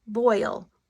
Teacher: we have a combination of two vowel sounds but it's not the short sound and it's not the long sound and it's not the Bossier sound it's a whole different sound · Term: diphthongs